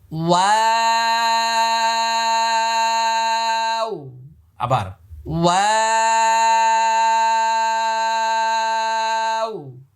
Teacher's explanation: ওয়াও একটি মাত্র হরফ, কোরআন মাজিদের যেখানে পাবেন, যেই কোন অবস্থায় পাবেন, ঠোঁট গোল হবে। ওয়াও, শুরু এবং শেষ দুই জায়গায় ঠোঁট গোল। আবার ওয়া, অনেকের ঠোঁট গোল হয় না, এভাবে প্র্যাকটিস করবেন আয়না হাতে নিয়ে নিয়ে।